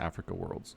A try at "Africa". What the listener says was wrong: Like how you say it, Africa World. I know, but you put the emphasis on the free, and I put it on the A or A.